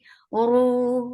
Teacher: ra is heavy. For damma, circle your lips, make it two counts long